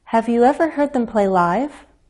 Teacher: glide up on a single stressed syllable listen for that little drop before we rise